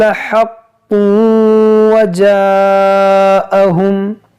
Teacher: یہاں پر دیکھیں یہ حا کو اور یہ قاف کو صحیح سے ادا کیجئے گا. حق اور یہ تنوین کے بعد واو ہے تو ادغام کریں گے